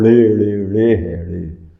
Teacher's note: پوری زبان کو ایک کلا بازی کھانی پڑتی ہے، اوپر تالو کے قریب جا کے نا یہ ٹکر کھاتی ہے، الٹی ٹکر، جس کی نیچے والی سائڈ جا کے اوپر لگتی ہے تو ڑے نکلتی ہے